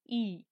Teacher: ই যখন আমরা উচ্চারণ করি তখন মুখ প্রায় ভেতর দিকটা ভর্তি হয়ে আসে, মানে মুখগহ্বরে কোনো শূন্যস্থান প্রায় থাকেই না, তাই এটি হয় সংবৃত। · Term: সংবৃত স্বরধ্বনি